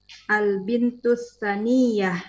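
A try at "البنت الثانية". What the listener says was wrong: Salah. Saniyah. Sanya panjang. Ayo, salah.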